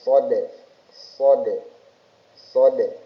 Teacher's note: huruf dal ini jangan lupa memantul atau qalqalah. Jadi shad shaod shaod qalqalehnya sugro di tengah-tengah. · huruf dal ini jangan lupa memantul atau kol-kolah